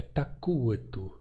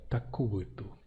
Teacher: Então, akup é um verbo tativo ser quente, e a forma quem é quente é takuetu, com um P lenizado para U